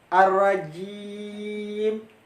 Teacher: Ar-rajim, karena murni dari ya ini, ja nggak boleh masuk ke hidung, ya juga nggak boleh masuk ke hidung karena huruf mat, karena keluar dari al-jauf